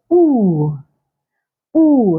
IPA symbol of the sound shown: uː